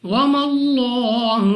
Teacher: لام آف اللہ سے پہلے حرف پر زبر، تو اس لام آف اللہ کو پر یعنی موٹا پڑھیں گے